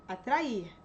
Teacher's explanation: Então, a tonicidade está no I.